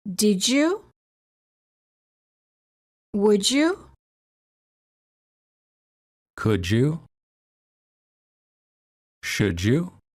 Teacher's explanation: D+ Y is usually pronounced as J as in joke